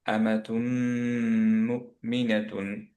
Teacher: তুম ধরে রাখলাম বিকজ মিম মিম গুণা হয়ে গেল এখানে, অ্যাকচুয়ালি তুন ছিল, তুনের নুনটা মিমের সাথে মার্জ হয়ে গেছে